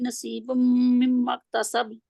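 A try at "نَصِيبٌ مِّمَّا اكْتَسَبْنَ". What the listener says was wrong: सीन नहीं है, सौद है। नसीबुम मिम्मत मक्तसबन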